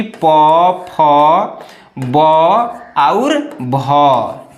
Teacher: ओष्ठ मतलब कि जिनका उच्चारण ओठ से हो वे ओष्ठ वर्ण कहलाते हैं।